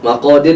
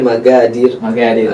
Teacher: dalam dialek orang Arab juga ada juga kadang ya. Qaf berubah menjadi ga ya.